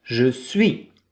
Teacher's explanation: The S at the end, like many consonants, we don't hear them.